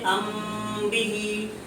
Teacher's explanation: میم ساکن کے بعد اگر با آئے تو اخفاء شفوی ہوگا، اس میں بھی غنہ بڑھا کر پڑھیں گے ایک الف کے برابر. جیسے ام بھی، میم ساکن کے بعد اگر با آئے گا تب بھی غنہ کریں گے.